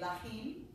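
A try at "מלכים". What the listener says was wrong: But you start with your lips in the M sound. Mlachim. Mlachim.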